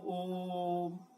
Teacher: तो शब्द तो एक है ओम, लेकिन आप देखिए उसमें हम ओम, बीच जो ओ है उसमें हम ज्यादा समय तक लगा रहे हैं, यानी वह क्या है, जो ओम होगा या नमो होगा वह प्लुत स्वर का क्या होगा, उदाहरण होगा।